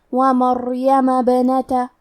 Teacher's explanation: حرف البا پہ جزم ہے تو یہاں با کا حکم ہے قلقلہ، ہم یہ حرف کو ہلاتے ہوئے یہ کلمہ کو پڑھیں گے